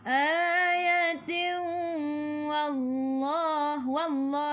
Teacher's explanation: sebelum lafzul jalalah ada baris atas, kena baca dengan tebal. Wallah, taghliz nama dia.